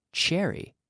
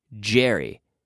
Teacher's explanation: we take the CH sound and we activate the vocal cords, and we have the j. So if we say cherry, we have the ch.